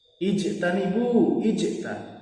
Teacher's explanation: Ijtanibu, ijta, qalqalah sugro, karena salah satu huruf qalqalah yaitu jim berharokat sukun berada di tengah kalimat. Cara membacanya yaitu dengan sedikit dipantulkan.